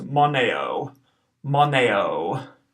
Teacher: the first O is short. The O at the end of the word is long, so this will be pronounced moneo, moneo. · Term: long O